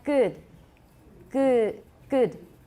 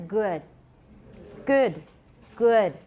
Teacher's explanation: you're going to hear that little schwa after all of the short vowels, even very short vowels